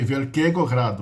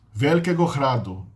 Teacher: em tcheco a palavra é acentuada na primeira sílaba